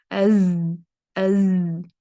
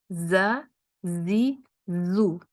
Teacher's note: تو زا میں آواز تو جاری رہے گی لیکن اس میں سانس نہیں ہوتی. تو میک شور کریں کہ جب آپ زا کو پڑھیں اس کے ساتھ اپنی سانس کو بحال نہ کریں، مطلب سانس کو روکیں.